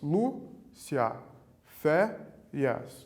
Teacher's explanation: O acento está na penúltima sílaba. Então, nós temos o acento no lu e o acento no fé, na penúltima.